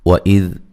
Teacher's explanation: ذال کو نرم ادا کریں گے، ہلانا نہیں ہے